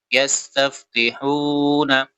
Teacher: حو واو مدہ ہے اس وجہ سے اس کو کھینچیں گے